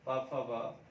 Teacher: पा वर्ग को हम ओष्ट कहते हैं, ओष्ट उच्चारण होता है इसमें, देखिए ये कहलाता है ओष्ठ, ओष्ठ, और होठों से होता है इसका उच्चारण, ओष्ठ कहलाता है। ये पूरा पा वर्ग होठ से होता है